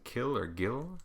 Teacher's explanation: Velar is the back of the tongue and the back of your soft palate, as in kill or gill.